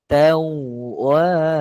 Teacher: Sabdu pada wau kena tekan